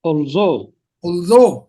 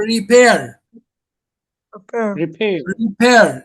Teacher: the stress lies on the second syllable